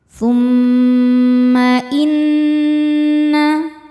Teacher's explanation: Tahan dengungannya kurang lebih dua harakat. Tumma inna nun tasydid dihukumi ghunah musyaddadah karena nunnya bertasydid. Cara bacanya berdengung. tahan dengungannya kurang lebih dua harakat. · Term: gunnah musyaddadah